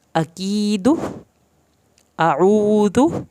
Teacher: ऊ वाव साकिन की वजह से खींचा, की या साकिन की वजह से खींचा।